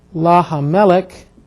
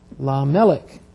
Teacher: Whenever you have the inseparable preposition added to the article, what happens is Hebrew at times will drop out a hey when it's between two vowels.